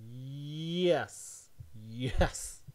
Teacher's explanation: the body of your tongue sort of goes close to the roof of your mouth but it doesn't quite touch it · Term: approximant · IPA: [jɛs]